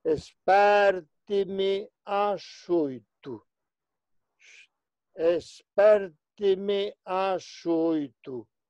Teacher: 2M non se xeminan, non se duplican